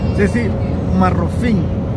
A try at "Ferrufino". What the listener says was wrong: no puedes pronunciar la R.